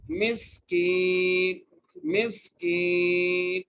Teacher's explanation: بعد جزم ہے، طعامل مسکین، میم کو سین سے ملائیں گے، سین کو ادا کریں گے، سیٹی کے ساتھ پڑھیں گے سین کو